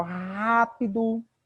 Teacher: rápido, o acento é no rá